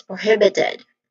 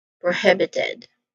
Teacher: second syllable is the stress syllable here which is the hib